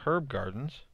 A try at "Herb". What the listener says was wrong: H. The H is silent.